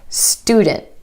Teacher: Instead of student, student. My tongue stays up for the T sound after the N. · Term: held t, held T